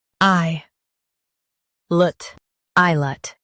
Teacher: Stress I and keep lut light.